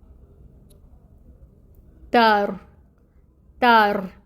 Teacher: تا باریک حروف میں سے ہے، اس کو باریکی سے ادا کریں گے۔ اس کے اوپر فتحہ ہے، ایک حرکت پڑھیں گے 1 کاؤنٹ، اور را اس کے ساتھ ہے۔